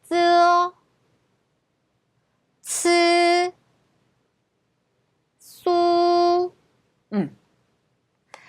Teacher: 윗니하고 아랫니를 나란히 해주세요. 그 다음에 그 틈으로 새는 바람 소리라고 보시면 되고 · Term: 혀와 입소리